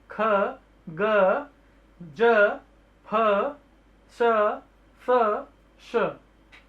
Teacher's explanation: मुख के 2 अवयव एक दूसरे के निकट आ जाते हैं और वायु निकलने का मार्ग संकरा हो जाता है, छोटा हो जाता है, और वायु घर्षण करके रगड़ के निकल रही होती है, उसी को ही संघर्षी व्यंजन कहते हैं।